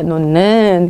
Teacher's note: 되고요 히읗 뒤에 니은으로 시작하는 어미 니은 다네 나가 결합되는 경우에는요 니은으로 동화시켜 발음을 합니다